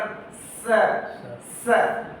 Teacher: हाँ स माने वो दांत से होते हुए वो निकल रहा है ना, वायु जो है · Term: दंत्या